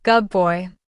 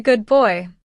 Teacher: For instance, good boy sounds more like gub boy. The D blends into a B. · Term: Assimilation